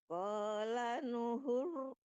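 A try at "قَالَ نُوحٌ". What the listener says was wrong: Nunya, iya nunya panjang. Huru, ditebalkan rohnya biar nggak banyak getarannya langsung ditebalkan rohnya. Huru.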